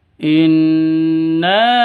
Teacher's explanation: tajuknya in [Musik] arsalna di sini ada Nun tasdid Nun tasdid Nun tasdidnya berdiri sendiri artinya ini dengung dua ketukan